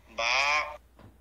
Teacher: স্বাভাবিক অবস্থায় মুখ যেমন ঠোঁট দুইটা মিলে থাকে মিলন ঠোঁট খুলে দিলেই হয়ে যায়